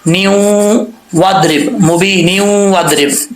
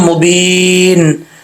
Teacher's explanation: اگر ملا کے پڑھیں گے آگے تو پھر نون کے نیچے 2 زیر ہیں، اس کو واو کے ساتھ کنیکٹ کرنا پڑے گا